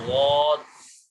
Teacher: ضاد کی ادائیگی میں بھی زبان کا بیچ اوپر کے تالو سے لگ رہا ہے